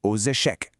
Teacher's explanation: note how the x links to the vowel